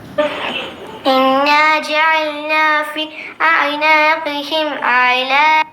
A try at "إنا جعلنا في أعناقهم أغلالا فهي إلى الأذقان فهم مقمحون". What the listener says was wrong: അവിടെ കൂടെ ശ്വാസം വലിച്ചു വിടുക, അത് പറ്റില്ല. إنا جعلنا في أعناقهم أغلالا فهي إلى الأذقان فهم مقمحون. ഇങ്ങനെ ഓതണം.